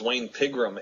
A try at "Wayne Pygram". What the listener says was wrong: Wayne Pygram, not Pigram.